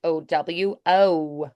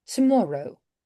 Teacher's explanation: I'd probably do the o at the end, but with less diphthong than Americans.